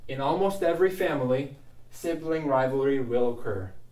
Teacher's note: instead of saying in almost, let's put this N on the next word. I'm going to say nalmost, in almost.